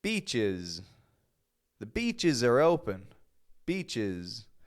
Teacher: S doesn't just sound like Z, but it sounds like is. It gets that sound, is.